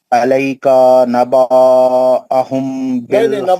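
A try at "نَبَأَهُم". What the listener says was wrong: नहीं, नबा नहीं पढ़ना, नबा एक हरकत, नबा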